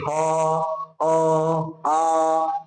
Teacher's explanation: ह अ आ कहां से बोला जा रहा है कंठ से बोला जा रहा है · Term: कंठ वर्ण